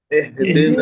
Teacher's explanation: जो कसरा होता है उसको एह नहीं पढ़ेंगे, बा जेर बी होता बे नहीं पढ़ेंगे, नून जेर नी होता ने नहीं पढ़ेंगे, है ना।